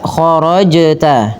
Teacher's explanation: huruf qalqalahnya adalah huruf jim, maka pantulkan dengan membunyikan dengan huruf jim